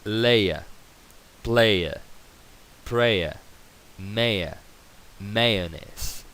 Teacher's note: Normalmente, todos los triptongos en inglés van a tener esta schwa, esta vocal débil